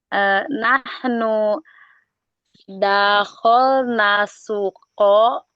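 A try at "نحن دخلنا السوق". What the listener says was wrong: Gitu. Dakhalna panjang. Syukran.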